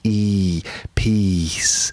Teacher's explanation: that's peace with a long vowel sound. E, peace. Not a short vowel sound, because that would be words of piss